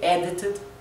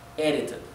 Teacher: puede pronunciar la D claramente, edited, o como una R nuestra